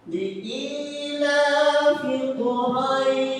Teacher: di situ ada huruf ro yang sifatnya adalah tafkhim, yaitu tebal